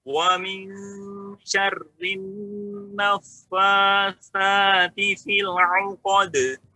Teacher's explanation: nun sukun bertemu dengan shin, hukumnya ikhfa. Masukkan ke hidung, Pak. Ada gunnahnya.